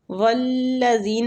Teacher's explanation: والذین وہ پہ ہونٹوں کو گول کریں گے، زال نرمی والا حروف ہے اور یا مد بھی ہو رہی ہے، زال کو کھینچیں گے